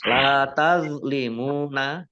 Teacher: La tazlimuna lam fathah alif mat tabi'i panjang 2 harokat. Tazlimuna the sukun bukan kolkolah ya.